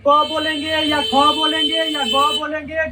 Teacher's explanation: सब का उच्चारण स्थान ध्वनि कहां से उत्पन्न होता है कंठ से